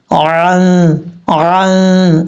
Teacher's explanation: عین کو اپنے مخرج سے ادا کرنا ہے، حمزہ کی آواز نہیں آنی چاہیے، عین کی آواز ہی آنی چاہیے